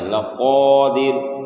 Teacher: قاف ہے بڑی قاف، تو اس لیے اس کا مخرج کو بھی درست کرنا ہے اور موٹا کر کے پڑھنا ہے